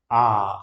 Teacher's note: देखो खुल रहा है, देखो आ, जैसे ही आ का उच्चारण करोगे सबसे ज्यादा मुंह खुलता है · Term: विव्रत